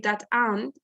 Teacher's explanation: For example, if I say that ant, it's a hormiga, that ant. So we are linking T and the A, that ant. Also, we have linking R is the easiest example of this.